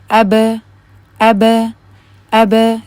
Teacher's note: جب آپ قلقلے کی ادائیگی کرتے ہوئے اپنے منہ کو ساتھ میں کھولیں تو اس کے ساتھ کیا ہوتا ہے کہ پھر اس میں فتحہ کی سی آواز آتی ہے۔ جس طرح اب یہ لفظ جو لکھا ہوا ہے اس کو دیکھیں، میں بھی اس میں منہ کھولوں گی ساتھ میں، اب اب اب، تو آپ دیکھ رہے ہیں اس میں ب کر رہی میں اس کی، کیونکہ اس میں فتحہ کی آواز آ رہی ہے۔